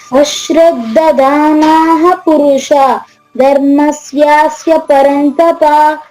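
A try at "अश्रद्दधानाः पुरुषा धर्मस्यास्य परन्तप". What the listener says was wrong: అశ్రద్ధదానాః పురుష. దీర్ఘం ఉంది, బాగా లాగండి. మళ్ళీ ట్రై చేయండి.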